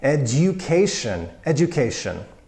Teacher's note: the U becomes itself a you after the hard consonant D